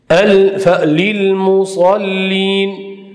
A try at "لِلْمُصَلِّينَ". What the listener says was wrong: Lil musallin dedi bazı adamlar. Musallin. Bu hem hata. Sadnin tasiri de lam yoğunlaşıp getirdi. Bu hem hata.